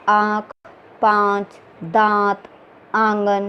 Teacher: इसका उच्चारण नासिक और मुख दोनों से होता है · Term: अनुनासिक